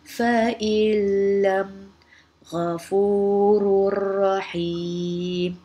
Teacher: Contohnya untuk nun sakinah ialah fa'ilam dan contoh untuk tanwin ialah ghafurur rahim. Cara bacaannya pula ialah menggabungkan bunyi nun kepada huruf selepasnya sama ada lam atau ra tanpa dengung. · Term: idgham bila gunnah